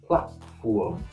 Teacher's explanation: instead of or, like a very rounded sound, it becomes oo. Platform. Also, don't pronounce the T.